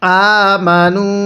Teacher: হামজা খারা জবর এজন্য এক আলিফ টান দিব